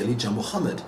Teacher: the H is pronounced because it's a name of Arabic derivation